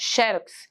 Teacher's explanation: você coloca o xe como mais forte, xerox, ou então xerox, como se o urox fosse mais forte.